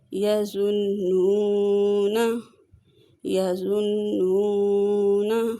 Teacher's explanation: نون مشدد پہ غنہ کریں گے اور اسے 1 الف کے برابر لمبا کر